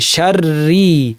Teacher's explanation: তেমনি এখানে বীর একা থাকলে রটা পাতলা হতো, কিন্তু রয় তাসদিদের সাথে জবর থাকায় পুরোটা ভারী হয়ে গেছে, বির আল বির। এইখানে রয় তাসদিদের সাথে জের থাকায় পুরাটা পাতলা, শাররি বলতে হবে, পুরাটা পাতলা করে, শাররি।